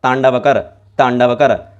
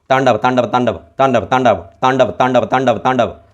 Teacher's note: मतलब बोलने से पहले आप देखोगे कि आप त बोलना चाहो जैसे ही आप बोलना चाहोगे तब आपकी जी्हावा तुरंत दांत पर पहुंच जाएगी।